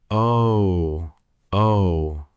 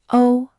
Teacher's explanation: You drifted toward an oo sound. Keep the lips rounded, but the sound more like ah.